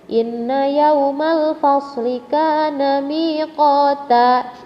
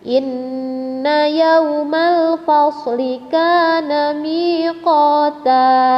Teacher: Karena di sini dia adalah gunnah, maka harus ditahan 2 harkat atau 2 ketukan.